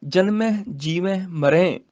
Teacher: ਜਨਮੈ ਜੀਵੈ ਮਰੈ ਇਹ ਸਾਰਿਆਂ ਦੇ ਨਾਸਕੀ ਉਚਾਰਨ ਹੋਣਗੇ